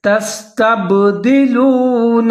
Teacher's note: سین کو آپ نے زہر کر کے پڑھنا ہے، سیٹی بجانی ہے